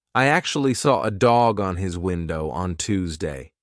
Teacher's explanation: it's like I'm saying one big word there are no gaps in the middle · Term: linking sounds